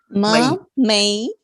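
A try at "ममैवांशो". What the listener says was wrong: Mai, not may. Not may. Mai. You see how the lips are moving?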